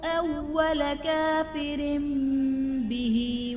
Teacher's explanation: کافر به میں را کے نیچے دو زیر کی تنوین، تنوین کے بعد حرف با تو تنوین کو ہم میم سے بدل کر اخفا کریں گے، یعنی یہاں پر غنہ کر کے پڑھیں گے، اقلاب کا قاعدہ ہوگا۔